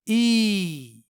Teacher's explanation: साकिन है यानी यहां या को खींच कर पढ़ना है यानी या की आवाज को दो हरकत के बराबर लंबी करके पढ़नी है · یا کی آواز کو 2 حرکت کے برابر لمبی کر کے پڑھنی ہے اس طرح ای۔ حمزہ پیش یا سکون اوئی ای ای اوئی۔